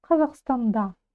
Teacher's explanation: Ударение на последний слог.